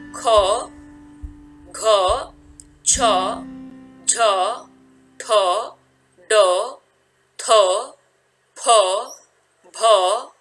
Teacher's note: यहाँ लिखा गया है कि महाप्राण जिन व्यंजनों का उच्चारण करते समय वायु अधिक मात्रा में बाहर निकलती है उन्हें महाप्राण कहते हैं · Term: महाप्राण व्यंजन